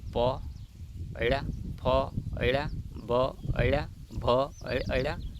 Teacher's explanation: બંને ઉપર નીચેના હોઠ એકબીજાને સ્પર્શે છે માટે એ ઓષ્ટીય વ્યંજન કહેવાય